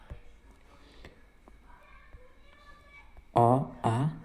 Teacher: कंठ स्वर, गले से निकलने वाले स्वर। अ, आ जो गले से निकलते हैं।